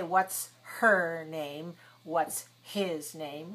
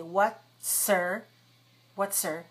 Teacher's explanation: comes in a phrase in the middle of a phrase then we delete the H and we link the words together